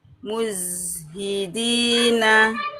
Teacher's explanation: Ya, zai sukunnya Bunda, tidak muzhidi la. Muzhi, alirkan zainya, dia punya sifat rokhawah.